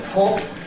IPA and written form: hɒp (hop)